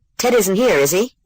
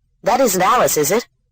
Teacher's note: form Tag questions with Rising intonation